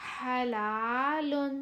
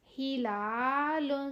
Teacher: ہا کی آواز نکلتی ہوئی رگڑ کھاتی ہوئی آپ کو محسوس ہوگی